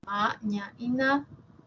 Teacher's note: las nasales, ¿sí? Ma, ña y na, que tienen siempre la úvula despegada de la pared faríngea. Una es bilabial, como es esta imagen, la otra es palatal y la última nasal, alveolar.